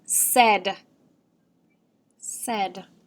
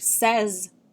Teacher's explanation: there's a voiced s at the end